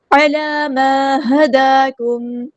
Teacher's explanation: کاف باریک light letter ہے، میم ساکن پہ اظہار شفوی ہو رہا ہے، ٹائم نہیں دینا · عین کو وسطی ہے لیکن زور سے ادا کریں گے. لام پہ حرکات مد آئی ہے 2 کاؤنٹس، یعنی 2 حرکات لمبا کریں گے.